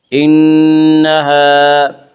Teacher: انہا، الف مدہ، الف ہمیشہ مدہ ہوتا ہے، الف سے پہلے ہمیشہ زبر ہوتا ہے، الف مدہ کو ایک الف کے برابر کھینچ کر پڑھیں گے